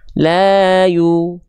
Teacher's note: Maka huruf ya-nya nggak dibaca ya lagi, tapi huruf ya-nya kita baca menjadi U. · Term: harokat dhammah